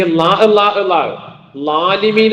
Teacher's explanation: ഈ ളാഹ് വരുന്നത് നാവിനെ നേരെ മുൻപല്ലിന്റെ മുകളിലേക്ക് തട്ടി